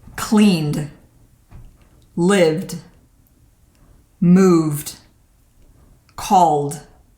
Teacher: In these verbs, we use the sound d for the ed pronunciation. If your verb ends with a n, clean, a v, live, move, or an L, call, your pronunciation will be duh.